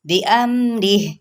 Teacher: وقف کرتے ہوئے ہا کی ساؤنڈ نکالنی ہے